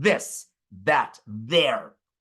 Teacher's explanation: that interdental voice th right as in this that there but in Spanish for example it's represented by the letter D